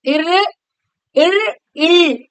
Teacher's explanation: ஓகேங்களா அடுத்தது ர் இல்ு இந்த ரெண்டு எழுத்தும் சொல்லும்போது ர் இர் இல் அப்படிபோமா இல் அப்படிங்கும்போது இந்த நுனியானது நாக்குடைய நுனியானது மேல்வாயை வந்து வருடுவதனால் வந்து பிறக்கக்கூடியது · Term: வருடுதல்